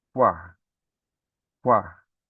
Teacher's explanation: o som mais forte é do A, né? O U, ele é mais fraquinho, ó. Ele aparece esse som, mas aparece de uma forma mais fraca na hora que você vai falar essa sílaba, né? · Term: ditongo crescente